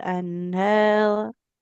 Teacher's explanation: min tahti huruf han-nya di tengah tenggorokan